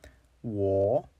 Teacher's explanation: Now you really want to round out your lips when you're saying this, almost to an exaggerated level.